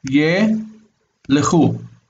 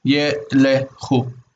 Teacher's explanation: So ye is a syllable and lechu is a syllable. So the lamed and the kaf are just run together in pronunciation. And that's the vocal schwa belongs to the next syllable.